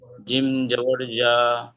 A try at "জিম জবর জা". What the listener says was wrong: একটু চেপে বলবেন ভাই, জিমটা একটু চেপে বলবেন, তারা বললেন।